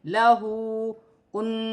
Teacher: واو ساکن سے پہلے پیش ہے، واو مدہ بنے گی، 1 الف کی مقدار کھینچ کر پڑھا جائے گا۔ ہا پر الٹی پیش ہے، 1 الف کی مقدار کھینچ کر پڑھا جائے گا، جیسے لہو کن۔